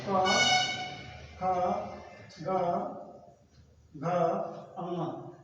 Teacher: पहला जो होता है पहला अल्प प्राण, दूसरा महाप्राण, तीसरा अल्प प्राण, चौथा महाप्राण और पांचवा अल्प प्राण